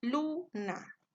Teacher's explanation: la sílaba tónica en el primer ejemplo de luna se encuentra en la penúltima sílaba, por lo tanto sería una palabra grave.